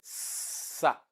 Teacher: that is voiceless alveolar fricative